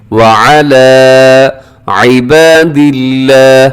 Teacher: लफ्ज़ अल्लाह को अपने बारीक पढ़ना है